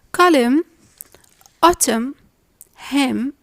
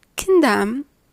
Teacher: the N sound is silent after the M sound